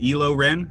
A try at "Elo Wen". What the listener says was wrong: I think it's Wen, not Ren. It's